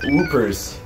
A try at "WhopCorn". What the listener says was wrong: There's no double O in Whoppers. Just WhopCorn. WhopCorn.